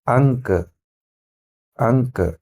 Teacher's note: मुंह से नहीं बल्कि ये केवल नाक पर ले रहा है, तो ये अनुस्वार हो गया, ये अनुस्वार हो गया, ये अनुनासिक हो गया।